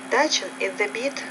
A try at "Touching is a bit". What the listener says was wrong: There, the T, touching. So you're a little hesitant to pronounce the T, touching.